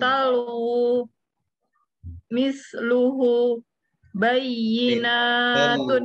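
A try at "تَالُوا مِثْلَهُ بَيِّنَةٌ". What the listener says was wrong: Talu misluhu dua harokat. Harus sama dengan yang di atas tadi. Jannatun ketika panjangnya segitu maka yang di bawahnya juga harus sama dan itu terdengar ya. Baik, sekali lagi lalu lebih panjang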